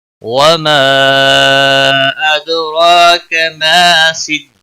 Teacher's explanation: وما مد منفصل ہے، 3 الف کے برابر کھینچ کر پڑھیں گے